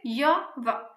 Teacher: य और व को बोलने में किसी भी तरह का संघर्ष नहीं करना पड़ता है, ये संघर्षहीन ध्वनियां हैं।